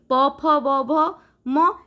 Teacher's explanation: शेषरे कौन ना प फ ब भ म ए सब कौन ना दुईटा ओष्ठ जोड़ी हे गले आमे ए वर्ण को ओष्ठ्य व्यंजन वर्ण बोली कही थाउ